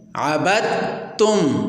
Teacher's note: ادغام کامل اس ادغام کو کہتے ہیں کہ جس ادغام میں 100% مدغم فی کو پڑھا جاتا ہے، جیسے عبدتم۔ اب اس مثال میں ہم حرف دال کو بالکل نہیں پڑھ رہے بلکہ حرف تا کو پڑھ رہے ہیں۔ گویا دال کا تا میں ادغام کر کے دال کو تا سے بدل دیا ہے۔